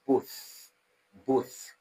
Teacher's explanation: when you pronounce both your tongue is touching the back of your upper teeth. uh that's why we call it dental sound.